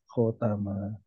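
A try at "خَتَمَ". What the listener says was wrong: Kho-nya masih kurang panjang.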